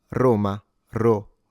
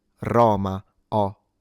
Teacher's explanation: So within standard Italian diction, this is supposed to be a closed O rather than an open O